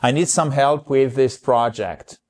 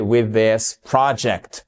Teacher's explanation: les deux mots sont liés. Et là vous prononcez en fait sans espace et comme un seul th. D'accord ?